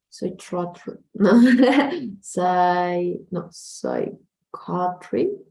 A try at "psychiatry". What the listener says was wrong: Close. This is going to be more like I, so it's going to be psychiatry.